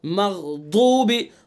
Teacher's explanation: द्वाद को सही अदा करेंगे, ना दाल पढ़ेंगे ना जाल पढ़ेंगे